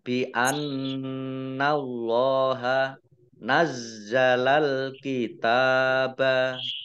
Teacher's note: Allahnya dibaca tebal karena harokat di depannya fathah. Lam fathah berdiri, mat tabi'i, panjang 2 harokat.